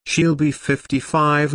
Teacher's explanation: Notice that 55 is stressed here.